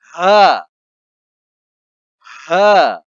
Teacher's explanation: ہاں حلق سے نہیں نکلے گا بلکہ سینے سے نکالی جائے گی